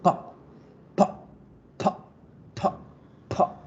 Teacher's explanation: Por eso con la P hago esa explosión y tengo que hacerla en inglés para que suene diferente.